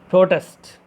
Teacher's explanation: First one using as a noun. So we stressed on the first syllable pro. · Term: word stress